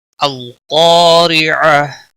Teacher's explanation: قاف کو موٹا پڑھیں گے، الف مدہ ہے، ایک الف کے برابر کھینچ کر پڑھیں گے، اور الف بھی یہاں موٹا پڑھا جائے گا، کیونکہ حروف مستعلیہ میں سے جب بھی کوئی حرف الف سے پہلے اسی کلمے میں آ جاتا ہے، الف بھی موٹا پڑا جائے گا۔